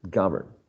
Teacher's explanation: govern is stressed in the first syllable